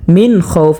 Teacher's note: এই নুন সাকিনকে আমরা গুন্না ছাড়া পড়ব, কারণ নুন সাকিনের বামে ইজহারের 6 হরফ থেকে একটি হরফ খ আসছে।